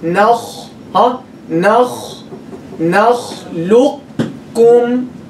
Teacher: We keep only the isti'la of the qaf. And we skip its qalqala. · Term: Incomplete idgham